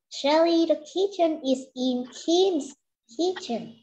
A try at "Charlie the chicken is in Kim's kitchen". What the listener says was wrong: You see, you just read Shelly the kitchen. Okay, try again. Make it slow first and then faster.